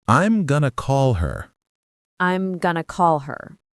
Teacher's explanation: Did you hear how call her almost becomes caller?